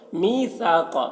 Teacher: می کو کھینچیں گے، یا مدہ ہے، یا ساکن سے پہلے زیر ہے،